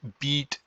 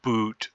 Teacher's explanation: there's a difference between the front vowel and the back vowel